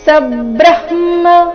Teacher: ಸಬ್ರಹ್ಮ ಇಲ್ಲಿ ಸ ಮೇಲೆ ಆಘಾತ ಬರಬೇಕು ಸಬ್ರಹ್ಮ ಬ್ರಹ್ಮ ಇಲ್ಲಿ ಬ್ರ ಆದ ನಂತರ ಮೊದಲು ಅರ್ಧ ಹ ಆ ಮೇಲೆ